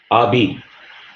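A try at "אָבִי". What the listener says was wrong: A, Abi. And here, look at the sir. So here, there is no dagesh inside. So it will be Avi. here, there is a dagesh inside. That will be ba.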